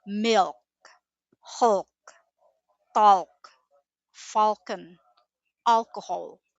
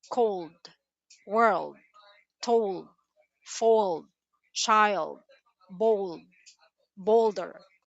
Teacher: We can see patterns of dark L sound in consonant clusters.